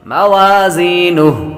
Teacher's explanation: موازینہ آخر میں جب وقف کریں گے اور ہا کے اوپر جو الٹا پیش ہے وہ ختم ہو جائے گا اور ہا باقی رہے گی، تو ہا کی آواز بھی آئے گی۔